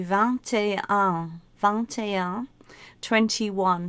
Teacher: 21 has an and in the middle, and you actually pronounce the T.